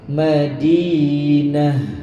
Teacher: Tu ta marbutah. Ketika diwakafkan, dia akan jadi ha bulat. Jadi sebutannya kena tebalkan ha tu.